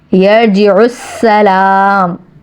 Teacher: یرجع السلام رو کو پر پڑھنا ہے, سین پہ جمانا ہے کیونکہ مشدد حرف ہے. لام پہ کھڑا الف ایک الف کے برابر کھینچنا ہے کیونکہ حرف مدہ ہو رہا ہے.